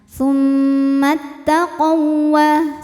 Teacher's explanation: Jadi cara bacanya adalah waw pertama dileburkan ke waw kedua tanpa harus kita tahan. Tsummat taqawwa, seperti waw tasydid biasa ya. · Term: idgham mutamatsilain